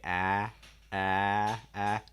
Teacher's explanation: Make sure your mouth's wide enough. Also, the front of your tongue is down, back of your tongue is down, middle of your tongue is high. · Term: ah sound